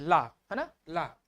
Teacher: लग रहा है कि हमारे जो जीभ के बगल से है, दोनों तरफ से जो पार्श्व में है उससे हवा निकल रही है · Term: पार्श्विक